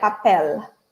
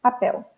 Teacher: in european portuguese people use this l more close to spanish and english but in brazil we don't use the same l · the l in the end of words and the end of syllable syllables in brazilian portuguese sound like oh and not like l